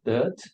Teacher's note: without the R sound, just dirt